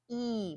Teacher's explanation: e is very far front that's where the sound resonates so when you say e focus on where you feel that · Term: long e